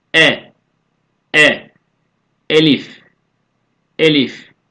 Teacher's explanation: dik şekilde yazılan Türkçede e sesiyle eş değer olan bir harftir elifi boğazın göğse bitişik olan kısmından telaffuz ediyoruz